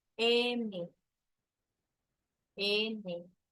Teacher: el aire sale por la cavidad nasal, M, N, E, I. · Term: nasales